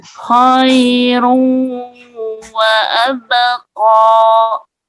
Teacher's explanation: Kha-nya jelas ya. Khairu ke hidung, wa-nya lepas dari hidung. Wa abqa 2 harokat.